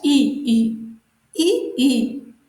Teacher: তালুর সাহায্যে উচ্চারিত হয় বলে একে তালব্য ধ্বনি বলা হয়